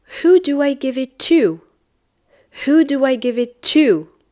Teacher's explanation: I'm stressing on to. So this is like a strong form.